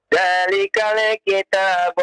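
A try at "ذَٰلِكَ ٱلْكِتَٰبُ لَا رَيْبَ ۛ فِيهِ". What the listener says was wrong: Zalikal ya, ketika lam dibaca jangan dilepas ya, ditahan. Zalikal kitabu, tidak zalikal ya.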